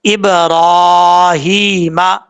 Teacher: با حروف قلقلہ میں سے ہے، یہاں پہ قلقلہ ہوگا